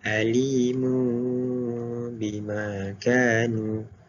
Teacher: ambil mim kecil atas ni, masukkan kepada ba dan menjadi mu, dengungkan 2 harakat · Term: iqlab